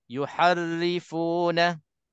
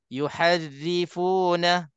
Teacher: bila nak tipiskan, hantarkan senyuman anda untuk tipiskan dan pastikan ra itu tipis.